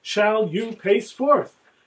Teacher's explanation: the stride of those four equally stressed syllables reinforcing the meaning of the word pace